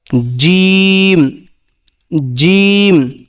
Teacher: যদি এক নুক্তা থাকে সেটা ডিম আর যদি ফাঁকা থাকে অর্থাৎ খালি যদি খালি থাকে সেটা হা আর যদি উপরে এক ফোটা থাকে সেটা খ তাহলে জিম একই রকম হরফ তিনটা অর্থাৎ নুক্তার জন্য পার্থক্য তাহলে জিম উচ্চারণ কোথা থেকে হবে জিমটা উচ্চারণ হবে জিহ্বার মধ্যখান জিহ্বার মধ্যখান তার বরাবর উপরে তালের সঙ্গে লাগাই